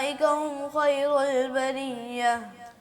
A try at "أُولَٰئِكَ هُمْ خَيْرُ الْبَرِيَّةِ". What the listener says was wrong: آپ جو ہے نا آپ کی آواز ساری لچک آ رہی ہے, اس میں کپاہٹ آ رہی ہے, ویبریشن ہو رہی ہے, آپ کی آواز نا صحیح نہیں آ رہی. ٹھیک ہے, آپ کی آواز میں بھی اصلی جو ہے نا وہ پاور ہونی چاہیے. کوشش کریں کہ آپ کی آواز میں گرفت ہو, مضبوطی ہو, ڈھیلا ڈالا نہ ہو.